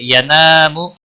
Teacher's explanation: الف مدہ ہے، ایک الف کے برابر کھینچ کر پڑھیں گے